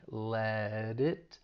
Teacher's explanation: in let we're going to pronounce this as a flap T that t comes between two vowel sounds so it's gonna sound like a flap T which is more like a soft D